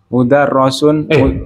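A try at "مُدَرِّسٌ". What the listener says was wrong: Kok mudarros? Kok ros? Bukan ros ya? Tapi ri.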